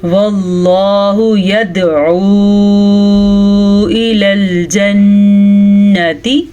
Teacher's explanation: چھوٹی مد ہے لیکن اس کی مقدار تقریباً 2.5 حرکات عربیہ ہے. 2.5 سیکنڈ تک ہم نے اس کو لمبا کرنا ہے.